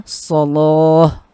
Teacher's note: lamnya dibaca tebal, bukan la tapi lo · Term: menebalkan lam